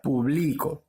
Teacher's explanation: ¿dónde lleva la mayor fuerza de voz? ¿Cuál es su sílaba tónica? La penúltima sílaba.